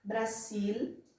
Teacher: o S suave e o L eu dobro a língua. Brasil. E surdo, não é zurdo não, surdo, o Z sempre suave.